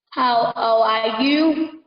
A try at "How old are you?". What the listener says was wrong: Con lên giọng ở giữa cái câu là how old are you cho thầy nhé, không phải là how old are you mà là how old are you nha.